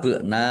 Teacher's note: ba sukun bacaan qalqalah ya dibaca memantul ditampakkan pantulannya. Nun fathah alif mad thobi'i.